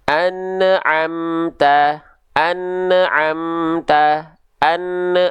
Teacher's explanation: terindikasi di ujung pelafalan itu ada bunyi vokal eu